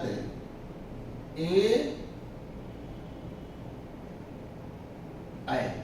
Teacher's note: कंठ तालव्य स्वर, कंठ तालव्य स्वर को परिभाषित किया गया कि जिन स्वरों के उच्चारण में फेफड़े से उठने वाली वायु कंठ और तालु दोनों को छू करके बाहर निकलती है, उन्हें कंठ तालव्य स्वर कहते हैं। कंठ तालव्य स्वर के अंतर्गत ए ऐ को सम्मिलित किया गया है।